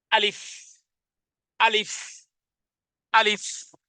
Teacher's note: আলিফ বলতে আমি শেষে কিন্তু দুই ঠোঁটকে একত্রিত করিনি এবং একটি একটি একটি শ্বাস বের হয়ে গেছে আর এটিকে আমি